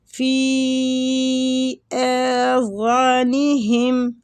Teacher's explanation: مد ہو رہی ہے، فی آذانہم، فی کے اوپر مد ہے، فی ویسے بھی یا مد کے ساتھ ہوتا ہے، اس کو ایک الف کھینچنا ہوتا ہے ، لیکن اب اس کے اوپر مد آ رہی ہے تو · اس مد کو کہتے ہیں مد جائز منفصل، اس کی مقدار 3 سے 4 الف ہے ، 3 سے 4 الف تک پڑھنے